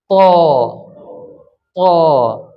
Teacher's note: زبان چپک جائے گی، زبان کا اگلا حصہ اوپر کے تالو سے تھوڑا سا چپک جائے گا۔